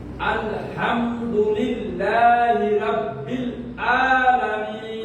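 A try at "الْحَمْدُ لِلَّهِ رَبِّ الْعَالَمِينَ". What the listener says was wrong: আর একটু আইনটা করে দেবেন। আলামিন।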